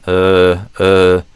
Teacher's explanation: my tongue isn't going up or down or front or back. It's just kind of blah just kind of hanging out. Not really like using my muscles to move my tongue in any specific direction. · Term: schwah sound